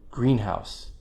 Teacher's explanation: main stress primary stress on the first noun the other nouns get secondary stress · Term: compound stress patterns